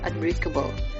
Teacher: fonem n atau dental berubah total menjadi fonem m atau bilabial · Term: asimilasi fonemis